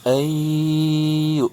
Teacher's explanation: nun sukun bertemu huruf ya, ini idgham bigunah, dilebur dan ditahan 2 harokat.